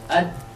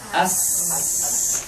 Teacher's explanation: ad langsung terhenti kan ad lawannya misalkan Sin as as As terus saja kan ngalir kan suara enggak terhenti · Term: syidah